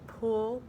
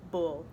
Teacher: p p is voiceless and B your voice is turned on